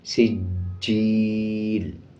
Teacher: سین کو جیم کے ساتھ ملا کے پڑھیں گے اور جیم پہ مضبوطی کے ساتھ بھی جیم کو پڑھا جائے گا۔ سجیل، یا کے اوپر جزم ہے، یا سے پہلے زیر آ رہا ہے 1 سیکنڈ لمبا کریں گے. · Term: شد